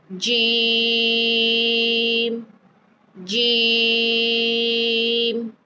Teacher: جیم کو ادا کرتے وقت آپ کی زبان کا جو درمیان والا حصہ ہے وہ اوپر تالو کی طرف اٹھے گا.